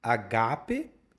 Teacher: você sempre pronunciou agape com a tônica no Gá